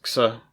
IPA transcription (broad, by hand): ks